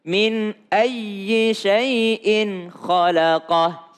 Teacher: Ketemu dengan hamzah, ketemu dengan kha, dua-duanya enggak berdengung.